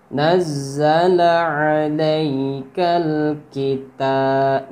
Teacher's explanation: fathah diiringi ya mati, ya bukan mad tabi'i, melainkan huruf lin. Jadi tidak dibaca panjang, melainkan dibaca lembut saja.